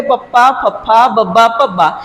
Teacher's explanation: ਜਾਂ ਜਿਹੜੇ ਤੁਹਾਡੇ ਦੋਵੇਂ ਬੋਲਣ ਨੇ ਇਹ ਟੱਚ ਹੋ ਜਾਂਦੇ ਨੇ ਦੋ ਹੋਂਠ ਨੇ ਜਿਹੜੇ ਇਕੱਠੇ ਹੋ ਜਾਂਦੇ ਨੇ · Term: ਦੋ ਹੋਠੀ ਧੁਣੀਆਂ